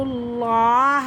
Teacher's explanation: یہ پر ہے، موٹا ہے، تو لفظ اللہ کی لام کو ہم موٹا کر کے پڑھیں گے